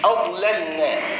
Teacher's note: حرف الضاد حرف مفخم، حرف اللام حرف مرقق